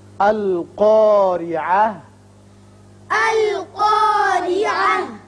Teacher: را کے نیچے زیر ہے، را باریک ہوگا. یہاں جب وقف کریں گے تو تا ساکن ہو کر ہا بن جائے گا